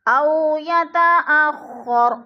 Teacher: ان یتقدم او یتاخر، او پہ وہ لین ہے، وہ ساکن سے پہلے حمزہ کے اوپر زبر ہے تو وہ لین کو لمبا بھی نہیں کرنا اور جھٹکا بھی نہیں دینا